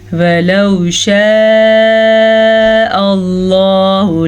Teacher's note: لفظ اللہ کو ہم پر پڑھیں گے کیونکہ لفظ اللہ سے پیچھے والے حرف کے اوپر زبر ہے